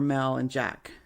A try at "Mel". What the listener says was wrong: It's to me it sounded like male, like men.